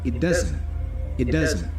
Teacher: The T for it is a stop T.